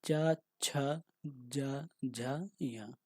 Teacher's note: से जीभ के मोटे वाले भाग जीभ का कौन सा भाग जीभ का मोटे वाले भाग और ताल को स्पर्श करके बोले जाते हैं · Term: तालाब व्यंजन, तालव्य व्यंजन